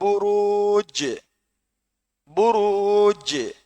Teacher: இந்த ஜீமை நாங்க அழுத்தி நிறுத்தணும் புரூஜ் என்று இருக்கு ஆனால் சுக்குன் செஞ்சு நிறுத்துவோம் வசனத்தினுடைய இறுதியில் புருஜ் அதே மாதிரி குல்ஹு அல்லாஹு அஹதுல தால்ல முடியுது லம்லிது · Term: கல்கலா